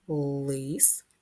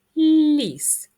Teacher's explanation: л у слові лис вимовляється твердо а ль у слові ліс вимовляється м'яко хоча на письмі позначає букву Л одну і ту саму Подивіться